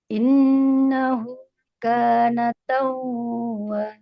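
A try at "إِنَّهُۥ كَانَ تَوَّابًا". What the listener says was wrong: Itu masih ketahan. Taw tekan double tawwaba.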